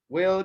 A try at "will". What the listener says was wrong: Ah, you said will. I heard would.